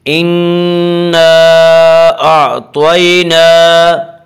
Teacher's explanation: کھڑا زبر کو ایک الف کے برابر کھینچ کر پڑھیں گے